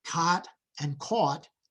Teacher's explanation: the back vowels, aw and ah, are merging in American English, meaning they are collapsing into one vowel